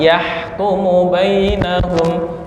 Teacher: hak tuh di tengah tenggorokan